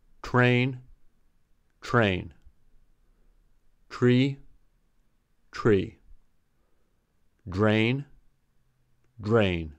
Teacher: In consonant clusters with TR, DR, and SR, since R is a palatal consonant, R can change its preceding alveolar consonant into the corresponding palatal consonant. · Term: palatalization